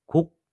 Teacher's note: 곡 하고 나서 목에서 입 밖으로 나는 공기끼리 입 안에서 차단된다는 느낌이 있을 겁니다. 그래서 공기끼리 차단돼서 이 개방의 과정이 생략되기 때문에 종성에 있는 기억은 또 다른 음성적 소리를 가지고 있다고 볼 수 있습니다.